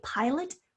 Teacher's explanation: we say pilot with a schwa sound in the second syllable